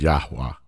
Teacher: pronounced with as three syllables that that's that middle syllable the the Hebrew VAV is almost silent you just frame your mouth as if you're going to say it but you don't really say it